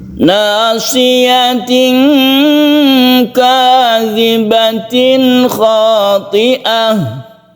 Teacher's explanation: Kita dengungkan ini, yang ini tidak dengungkan karena tanwin bertemu dengan kha itu adalah izhar